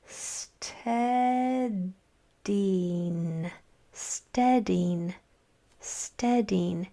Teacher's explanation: I'm saying that first syllable with more emphasis or with more strength. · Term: stressed syllable